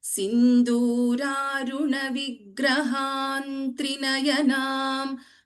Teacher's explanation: So, the Varga Panchama, Parasavarna rule applies here. So, the Anusvara gets replaced by Na.